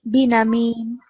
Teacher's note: make this noon a bit shorter because it was too long for just a fatha